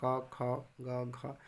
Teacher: जीभ का पीछे वाला भाग तालु के पीछे वाला भाग को स्पर्श करता है